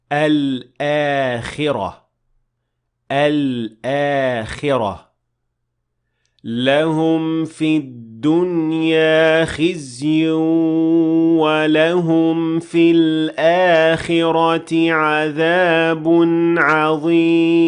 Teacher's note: You pronounce lam, then hamza, then an alif with a natural med of two counts.